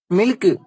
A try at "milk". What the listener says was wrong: டேய், அதை ஏன்டா சில்க் மாதிரி சொல்ற? கே நல்லா மென்மையா சொல்லணும். மில்க். அதேதான், மில்க்.